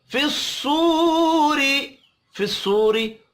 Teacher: फिस्सूरी साद भी हुरूफ मुस्तअलिया है, पुर पढ़ा जाएगा। वाव मद्दा को एक अलिफ के बराबर खींच कर पढ़ेंगे, रा ज़ेर की वजह से बारीक पढ़ा जाएगा।